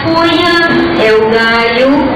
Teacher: essa passagem do L palatal para o iode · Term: ioti zação